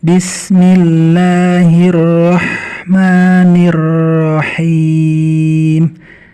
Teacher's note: ya nya panjang Karena ada ya yang jatuh setelah harokat kasrah maka dia jadi panjang 2 harokat